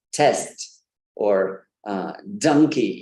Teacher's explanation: The tongue doesn't touch the teeth. Yeah, it's somewhere above the teeth on that alveoli or that are hard palate.